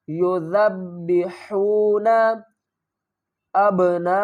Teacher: ذال کو نرمی سے ادا کریں گے اور ذال کو با کے ساتھ جب ملائیں گے تو با کے اوپر سختی کریں گے۔ یذبحون ابناءکم، حمزہ کو با سے ملائیں گے، با ساکن ہے تو یہاں پر کیا کریں گے، قلقلہ کریں گے، با کو ہلا کر پڑھیں گے۔